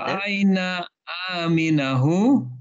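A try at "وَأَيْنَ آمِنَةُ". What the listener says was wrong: Aminatu. Pakai tak marbutoh di belakangnya.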